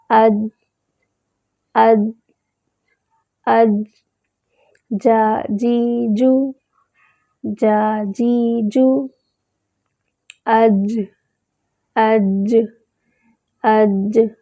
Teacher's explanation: زبان کا درمیانی حصہ اوپر تالو سے چپک جائے تو جیم ادا ہوتا ہے